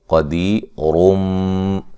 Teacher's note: جب وقف کریں گے تو را کو باریک پڑھیں گے، قدیر، جب ملا کے پڑھیں گے تو پھر موٹی را ہوگی